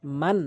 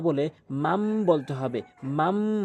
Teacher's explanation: তারপরে মিম জবর মান না বলে মাম বলতে হবে, মাম। কেননা নুন সাকিনের পরে বা আসছে এবং বা আসলে ম হিসাবে গুন্না করতে হবে। মানে এটি হচ্ছে বাংলাতে বুঝালাম, এবং যেটি আমরা বলি, অর্থাৎ নুন সাকিন এবং তানবিনের পরে বা আসলে ছোট্ট একটি মিম দ্বারা নুন সাকিন এবং তানবিনকে পরিবর্তন করে ছোট্ট মিম এনে গুন্না করে পড়তে হবে।